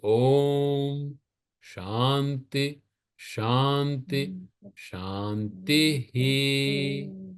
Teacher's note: Shanti, every time you say Shanti has a Visarga. But because it is followed by the next Sha, the Visarga disappears for the first two.